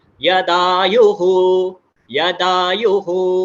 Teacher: यह यू को स्वरित का मात्रा है, तो ऊपर लेना है